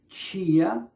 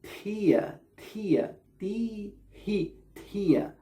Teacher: It's a T sound with an aspiration